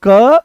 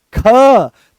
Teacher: तो जैसे ही आप बोलोगे क तो बड़ी सरलता से निकल आया। पर जैसे ही बोलते हो आप ख तो जोर लगाना पड़ा।